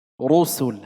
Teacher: هذه الثانية تكون الراء مضمومة. رسل حكمها التفخيم لأنها مضمومة